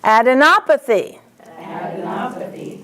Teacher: Adenopathy. Op is the accent.